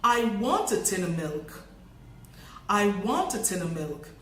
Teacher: in this sentence, the OF becomes just the schwa. In rapid speech, this often happens, that the function word is reduced to the barest minimum.